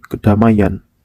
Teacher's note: Penambahan fonem Y pada morfem an, ke-an, pen-an, per-an karena bertemu dengan morfem yang berakhiran fonem I, ai. Contohnya, ke-an tambah damai menjadi kedamaian.